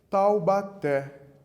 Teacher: três sílabas o assento está na última sílaba · O acento está na última sílaba. Isso mesmo, no té nós temos o acento.